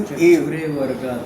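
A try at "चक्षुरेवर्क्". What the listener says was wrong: हाँ, और यह ग जो है यह ऋक क हो जाएगा। क का उच्चारण ऐसा होता है ना, इसमें पहला शब्द आ जाता है तो ऊपर वाला री और क, ग का उच्चारण नहीं होता।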